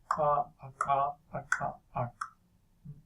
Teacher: you're placing your tongue tip in the alveolar ridge. So the front cavity is a bit larger than in the case of the dental. That's what gives the alveolar a lower resonance. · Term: alveolar click